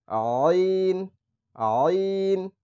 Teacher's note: আইন হচ্ছে গলার মাঝখান থেকে চাপ দিয়ে উচ্চারণ করতে হবে